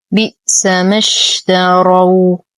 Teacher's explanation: نتم كسرة الباء، نصبر على الهمزة فهي ساكنة، لا نقول بئس ما وهذا خطأ.